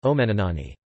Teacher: contains light syllables only and has primary stress on the first syllable and secondary on the third